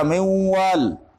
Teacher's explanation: نون میں جو صفت غنہ ہے واو میں ادغام کرتے وقت وہ باقی ہے، اس وجہ سے یہ ادغام ناقص ہے.